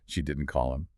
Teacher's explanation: Stress on didn't. Stressing didn't, the source says emphasizes the negative, meaning she never called.